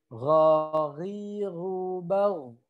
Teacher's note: biasanya dia terdengar seperti ada dengkurnya ya k kayak ada ngoroknya gitu